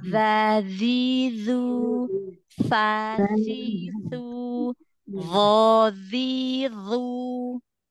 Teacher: dalal dengan ta ya cuman bedanya i sedikitikit ya I EE Ujung lidahnya ketemu dengan ujung gigi seri atas